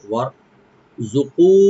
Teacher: ওয়ার, ওয়া open রাখবেন, রাটাকে এখানে মোটা করতে হবে ডিপ করে